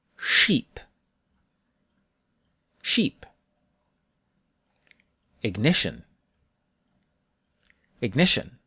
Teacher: start with Japanese she and pull your tongue back make your lips round this will make a lower sound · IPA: /ʃ/